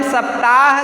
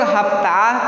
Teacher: Iran Iraq में स को ह के रूप में उच्चारित करते हैं